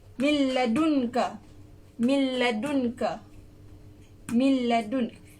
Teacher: Dia tak dengung tapi dia terus masuk ke dalam huruf lam. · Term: idgham tanpa dengung